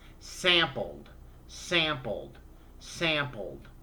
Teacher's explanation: d sound because the sample verb ends with an oral sound it ends with an l which is voiced you make a buzz at your vocal chords to make the l sound so you make a d to make it past tense